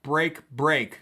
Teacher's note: That pop, pop, pop, 3 stressed syllables in a row.